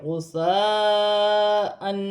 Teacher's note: 2 زبر کی تنوین میں غنہ نہیں کیا جائے گا، کیونکہ تنوین کے بعد حرف حمزہ آ رہا ہے · بھی 1 الف کی مقدار کھینچ کر پڑھا جائے گا۔ اور یہاں پر ثا نرمی والا حرف ہے، اس میں سیٹی نہیں ہونی چاہیے